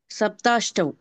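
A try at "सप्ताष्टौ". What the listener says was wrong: சப்த சப்த. நீங்க வந்து சொல்றது சப்த மாதிரி இருக்கு. சப்த த த சப்த சப்தாஷ்டௌ.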